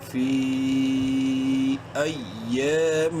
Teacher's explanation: میم مشدد ہے، اس لیے یہاں پر اس میم میں غنہ ہم نے کرنا ہے